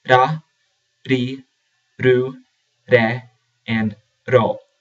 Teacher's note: It is a flap R produced by flapping the tongue off the roof of the mouth or the back of the teeth. With the vowels, it is pronounced ra, ri, ru, re, and ro.